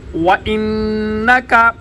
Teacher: واو پہ ہونٹ گول، نون مشدد، غنہ، کاف باریک